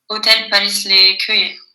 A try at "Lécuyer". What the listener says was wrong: Très bonne prononciation. L'écueil. Parfait.